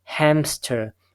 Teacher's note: however in the actual pronunciation we have a p sound · However, in the actual pronunciation, we pronounce this hamster. We have a per sound inserted between M and S. So in our mind, what we try to do is produce this sound, M and S, without any per sound inserted.